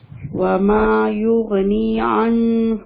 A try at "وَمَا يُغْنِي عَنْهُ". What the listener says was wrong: انہو یہاں پہ کیا مسٹیک کیا آپ نے؟ اخفا. ہاں جی بالکل. کیا کرنا تھا یہاں پہ؟ اخفا کرنا تھا یہاں پہ. غور سے دیکھیں ساکن کے بعد کیا ہے؟ کون سا لیٹر ہے؟ نون ساکن کے بعد ہم چیک کرتے ہیں نا.